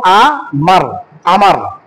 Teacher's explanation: আমার শেষে যে র টা উচ্চারণ হইলো র উচ্চারণটা হচ্ছে একক উচ্চারণ বাংলায় যে একক উচ্চারণটা হয় এটা আরবিতে ওটাকে বলা হয় জজম